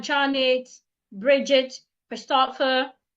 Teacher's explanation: you're listing their names, so your tone should go up. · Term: rising tone